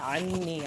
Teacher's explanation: اندر سے پڑھنا ہے، عنی عین کو حلق سے پڑھیں گے، نون کی شد پہ ایک الف کے برابر دیر لگائیں گے